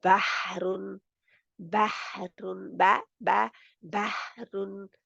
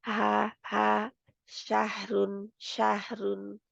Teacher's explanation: हा की आवाज हल्क से रगड़ कर निकलती है रगड़ा खाकर वहां से आती है